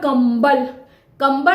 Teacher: ऊपर अनुस्वार है और अनुस्वार के बाद ब ब आया है ब का जो उच्चारण स्थान है वो ओठ है प फ ब भ म तो पांचों का उच्चारण स्थान ओठ आ रहा है